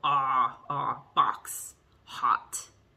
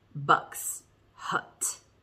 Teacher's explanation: both of these vowels are in the back your tongue's way in the back of your mouth one's high one's low · so ah is low ah box hot and uh is high bucks hut